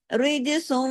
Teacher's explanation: جب تشدید ہوتی ہے نا تو تنوین ختم ہو جاتی ہے، سین جا کے واؤ میں جڑے گا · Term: ادغام